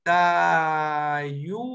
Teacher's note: Pero en un habla fluida le van a decir Tayúa. Es como una U alargada o como una W en medio de la U y de la A.